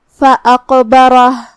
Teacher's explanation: کلمت فاقبرہ میں یہاں قاف پہ جزم ہے، تو قاف کا حکم ہے قلقلہ، ہمیں قاف کو ہلاتے ہوئے یہ کلمہ کو ادا کرنا ہے